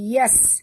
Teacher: bunyikan safir pada huruf sin yang mati.